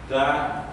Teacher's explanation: Tegese niku ujung lidah niku berdiri dan ujungnya ini menepati ke pangkal gigi depan yang atas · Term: dal